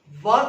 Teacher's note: जब भी आप वा कहते हैं, आपके दांत आपके होंठों को छूते हैं। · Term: दंतोष्ठ व्यंजन